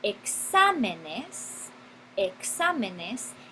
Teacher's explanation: el énfasis sobre la ante penúltima sílaba